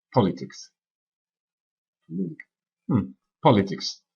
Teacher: L'accent est sur la première syllabe